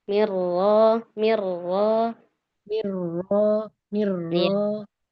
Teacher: rnya tekan di muqaddamul hanak